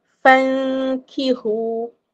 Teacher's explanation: Dan dia punya dengung tu dua harakat dibaca secara nipislah tak tebal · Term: ikfa